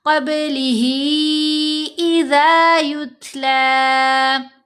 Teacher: ता साकिन है, इसके ऊपर हमने हम्स का इजहार करना है, ता की आवाज़ को थ की आवाज़ में बदलेंगे